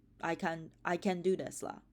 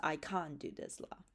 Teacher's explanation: they don't have the final cluster T. So the only way you can figure it out is by the vowel.